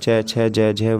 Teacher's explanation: ये च वर्ग जो होती हैं तालु से बोली जाती हैं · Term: तालव्य